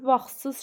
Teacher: vaxtsız sözündə t düşür. Vaxtsız şəklində tələffüz olunur.